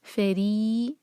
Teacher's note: را کے نیچے کسرہ جو ہے باریک پڑھنا ہے را کو